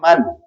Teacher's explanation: اس کی مثال آپ لے لیں، جیسے امن، آپ دیکھ رہے ہیں یہ میم ساکن ہے اور اس کے بعد دوسرا پھر حرف میم ہی ہے، لہذا یہاں پہ آپ اس کو من نہیں پڑھیں گے، بلکہ ایک ہی آواز کے اندر پہلی میم دوسری میم میں مدغم ہو کر کے غنہ کی ادائیگی کے ساتھ پڑھی جائے گی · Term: ادغام شفوی